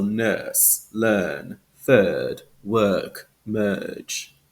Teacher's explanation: in British English we have that lengthened vowel sound